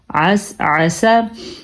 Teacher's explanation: برائے مہربانی اس عین کو ادا کرنے کا ضرور خیال رکھیں کیونکہ یہ عین ہے، حمزہ نہیں ہے. اگر ہم اس کو اس ایسا پڑھیں گے تو ہم نے عین کو الف بنا کے اس لفظ کا حلیہ بگاڑ دیا اور اس کا مطلب بھی پھر بدل جائے گا.